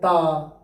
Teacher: ता ता बोलेंगे दांत में आके जीभ टकराएगी